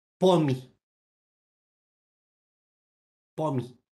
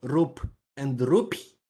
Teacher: So it's not a vowel per se. It palatalizes the previous consonant, no matter what it is. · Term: non-syllabic vowel